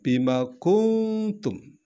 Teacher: Ada bima kuntum, huruf sukun atau sukun nun mati bertemu dengan ta. Ta adalah salah satu huruf ihfa, maka dibaca mendengung.